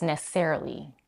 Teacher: she eliminates the vowel between the two s sounds in the word necessarily and just makes the S longer